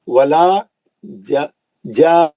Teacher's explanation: गुन्ना करके तनवीन पढ़ना, 6 हरकत पढ़ना पहले · नून का गुन्ना भी हो रहा है, यहाँ पे नून मुशद्दद भी है।